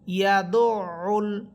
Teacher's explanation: ইয়া সবর ইয়া, দাল আইন পেশ দো, ইয়া দো, আইন লাম পেশ উল, ইয়া দো উল, আইন কণ্ঠনালীর মধ্যখান থেকে